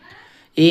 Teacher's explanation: ऐ का कंठ तालु होता है।